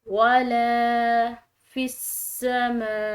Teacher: अब यहाँ पर देखें ये मीम, इसके ऊपर बड़ी मद है, मीम के बाद जो ये अलिफ है इसके ऊपर बड़ी मद है, तो इस बड़ी मद को हम खिंचाव देंगे। बड़ी मद को जो खिंचाव देने का टाइम पीरियड है वो कम से कम 3 अलिफ की मिकदार है, यानी इससे ज़्यादा हो सकता है लेकिन इससे कम नहीं होना चाहिए।